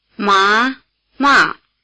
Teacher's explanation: the 2nd tone or rising tone word hemp and the 4th tone or falling tone word to scold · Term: rising versus falling